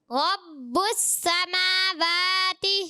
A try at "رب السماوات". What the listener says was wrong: ابھی واو پھر غلط پڑھا، سماواتی نہیں، سماواتی. ہونٹ گول کریں. رب السماواتی.